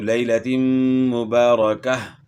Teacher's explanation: گولتا وقف میں ہائی ساکنہ سے تبدیل ہو جائے گی